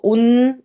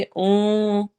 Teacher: نون کی آواز چھپانی ہوتی ہے، یہاں پر اخفا ہو رہا ہے تو ہم اس کو ان نہیں پڑھیں گے، اون پڑھیں گے۔